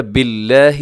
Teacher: لفظ اللہ کو باریک رکھیے گا، اس سے پہلے با کے نیچے زیر ہے۔